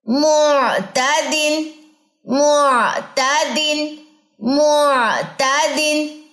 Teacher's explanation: اب اپنا عین جو ہے وہ درست کر لے. نہ اس میں شدت ہے نہ اس میں رخوت ہے، اس میں کیا ہے؟ توسط ہے